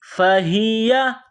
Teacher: یہ گول ہا ہے چشمے والی، منہ سے ہوا نکالنے کی طرح اس کو پڑھتے ہیں